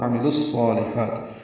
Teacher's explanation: وعاملوا واو میں ہونٹ کول کریں گے، عین وسط حلق سے ادا کریں گے، لام کو الصالحات کے صاد سے ملائیں گے، ادغام شمسی ہوگا۔ عاملوا الصالحات، صاد پر پڑھیں گے، 2 حرکات لمبا کریں گے، لام باریک ہے، خا وسط حلق سے نکالیں گے، اس کو بھی 2 حرکات لمبا کریں گے۔